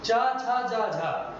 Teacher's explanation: जीभ ऊपर जाके टच करती है तालु में, तो तालव्य हो गया